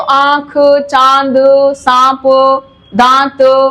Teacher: चांद सांप दांत तो यहां जब उच्चारण करते हैं आ तो मुंह और नाक दोनों का उच्चारण होता